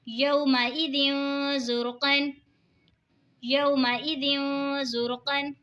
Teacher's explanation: یومئذ زرقا، یومئذ زرقا، دو زیر کی تنوین کے بعد حروف اقفا کا زار ہے تو اقفا ہوگا یعنی گنہ کر کے پڑھیں گے، را ساکن سے پہلے پیش ہے تو را ساکن کو موٹا پڑھیں گے